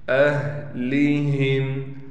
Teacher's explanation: ہا کو بالکل گلے سے سینے کی طرف سے نکالیں گے